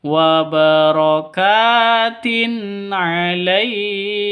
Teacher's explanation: Wa barakatin alaik. Tin alaik, tin tanwin bertemu dengan ain, jelas terang karena bacaan izhar.